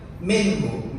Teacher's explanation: Gak boleh mantul, karena nun ini bukan huruf qalqalah. Sebagian orang membacanya mantul. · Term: idhar halqi